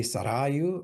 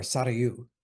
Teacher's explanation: It can be either pronounced with the accent on the first or second syllable. So it can be Sarayu or Sarayu.